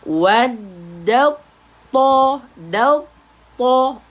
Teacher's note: To sebutan to tebal. Huruf isti'ala. Ingat, isti'ala sifat isti'ala pada huruf to. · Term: Bunyi tebal